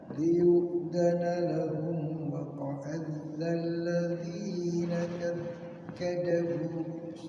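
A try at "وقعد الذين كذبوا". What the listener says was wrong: Iya, enggak ada tasydidnya. Hati-hati.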